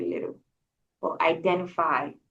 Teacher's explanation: That T, most Americans, when it's in the middle of the word, it's not pronounced. It's kind of swallowed.